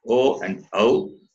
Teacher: It has the sound of guttural and palatal, combination of two sounds. O and OW, throat and lips. Therefore, guttural and labials.